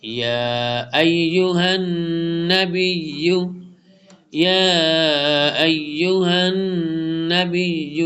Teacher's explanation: لونگ کریں گے، یا کو پر اسٹینڈنگ زبر ہے